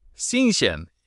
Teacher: It's a soft SH sound, tongue near your bottom teeth. You can try to say sinsen.